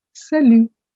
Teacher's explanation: the word salut has a T at the end, but that is silent. So you don't say salute, you say salut.